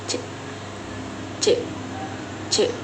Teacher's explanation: Huruf C dibentuk dengan menggunakan lidah dan langit-langit mulut serta menghasilkan suara yang tidak bersuara atau disebut letup palatal. Contohnya itu C c.